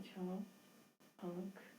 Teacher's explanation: इसका उच्चारण नाक और मुंह से किया जाता है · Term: अनुनासिक